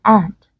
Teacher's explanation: Nhưng mà với cái âm thứ hai trong tiếng Anh Mỹ nhá, trong tiếng Anh thì hơi khác, cái từ thứ hai là từ và trong Anh ấy, họ đọc nó là and. Nó rất là giống âm e và họ không có độ căng miệng nhiều lắm, and. Còn với Anh Mỹ thì trong trường hợp này các bạn nhìn thấy là cái âm a nó đọc căng và nó sẽ bị nasalized, nó sẽ bị hơi bị mũi một chút bởi vì nó ảnh hưởng với cái âm mũi đằng sau là âm n đó.